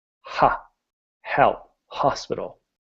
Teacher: the H sound is when you laugh everybody goes haa and all the H is is a puff of air